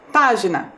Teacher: a sílaba mais forte também é a antepenúltima a sílaba pá